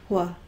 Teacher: Wh is not just a W. It's a W with lots of extra air. Wh. That spell with a W-H.